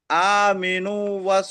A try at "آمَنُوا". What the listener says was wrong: হুম, আমিনু না, মিম জের না, মিম জবর আছে, আমানু।